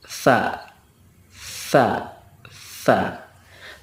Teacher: ujung lidah bertemu dengan ujung gigi seri atas